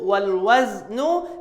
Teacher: Huruf za tak ada sifat qalqalah. Dia ada hanya sifat safir yang perlu diambil perhatian.